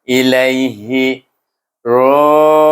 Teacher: Ilaihi lai itu bunyinya lin